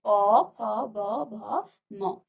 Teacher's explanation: आपके होंठ जो है आपस में स्पर्श कर रहे हैं, तो ये आपका क्या हो जाएगा, ओष्ठ या फिर ओष्ठ इसको कहा जाता है। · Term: प वर्ग